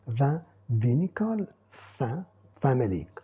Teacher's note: on peut dénasaliser en français de manière tout à fait naturelle parce que le i et le n sont suivis de une autre voyelle